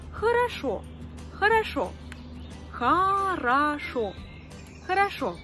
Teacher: Dans le mot хорошо, il y a 3 voyelles O. Et cependant, une seule se prononce O. Parce que les deux autres ne sont pas accentuées. C'est pour ça qu'on dit хорошо.